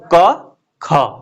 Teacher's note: ज्यादा वायु कहां से निकल रहा है? ख बोलते समय।